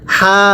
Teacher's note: এখানে হায়ের মধ্যে এক আলিফ, এটাকে হা, এই হাটা উচ্চারণের সময় গলার মাঝখান থেকে বাতাস বের হবে।